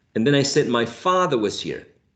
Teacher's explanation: Father is a tonic syllable because it's the most prominent syllable in this tone unit or intonation phrase